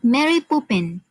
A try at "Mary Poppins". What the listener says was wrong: Mary Poppins, not Poopins.